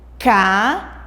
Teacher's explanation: Vocês podem perceber que o i ela sai um pouco mais forte da nossa boca. Então, por isso nós dizemos que I, nesse caso aqui, é uma sílaba. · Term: sílabas tônicas